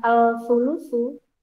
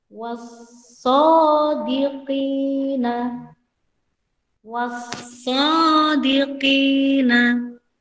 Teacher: Idgham syamsiyah alnya tidak terbaca, tapi masuk ke huruf berikutnya.